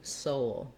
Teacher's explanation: bit of a glide from your o to your uh oh you can think of there being a little gliding w sound in there for you · that should be a schwa or an uh sound before your dark l you're gonna kind of have a little bit of a glide